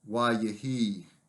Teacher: This is a very weak verb, doubly weak, as we noted, and as the grammar classifies it. So the initial vowel shortens to a shua. · Add the vowel consecutive, however, and we get a very shortened form, wa yehi. Again, the accent here on the preformative syllable and a shortened form